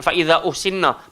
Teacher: Fa'iza 4 atau 5 harakat. Sebab apa? Ada alamatul mad, lepas dia ada hamzah. Jadi baca panjang, jangan pendek sangat.